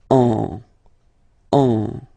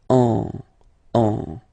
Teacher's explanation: you will get what we call nasal, so it goes in your nose, and then you get the sound en.